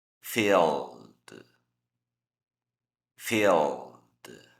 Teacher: Esos son sonidos sonoros, hay vibración de nuestras cuerdas vocales. Por lo tanto, vamos a pronunciar el ED como una D. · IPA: /d/